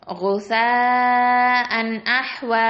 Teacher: சேல பாருங்க மத் இருக்கு, அப்போ அடுத்த எழுத்து ஹம்சா வந்திருக்கிறதுனால நம்ம என்ன பண்றோம், மத்தல் வாஜிபல் முத்தசில் 4 இல்லைன்னா 5 கவுண்ட் அளவுக்கு வரைக்கும் நம்ம நீட்டி ஓதணும். அது மட்டும் இல்லாம அந்த குஸாஅன் அப்படின்னு அங்க தெளிவா ஓதணும்.